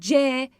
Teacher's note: C dediğimde dilim üst damağıma baskı yapıyor.